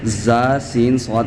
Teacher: जुबान की नोक और दोनों दांतों के अंदरूनी किनारों से जा सीन स्वाद अदा होते हैं।